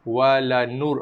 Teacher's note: wala nur, ra baris mati, sebelum dia ada nun berbaris hadapan. So ra dibaca tebal. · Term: tebal pada lidah